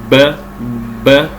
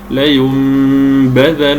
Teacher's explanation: والضغط الزائد على الشفتين هو غير صحيح وانما لينبذن نظهر نظهر نظهر الباء بصفه الجهر وصفه الشده التي فيها بدون زياده عن حدها